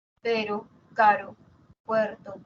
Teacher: La tercera es la vibrante simple, que es un solo tap